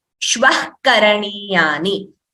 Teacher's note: Ataha Shvaha becomes Atashvaha. And here there is a Visarga followed by Ka, which is a Jihva Muliya